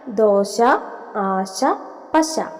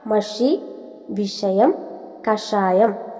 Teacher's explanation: ശ താലവ്യ അക്ഷരമാണ് ഷ മൂർധന്യം